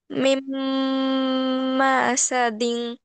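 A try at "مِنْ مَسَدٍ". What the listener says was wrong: মাসাদিন, সিনে টানা যাবে না।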